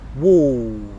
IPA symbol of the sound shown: ɔː